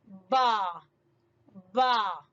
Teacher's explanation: جب دونوں ہونٹوں کی گیلی جگہ آپس میں ملے گی تو ادا ہوگا با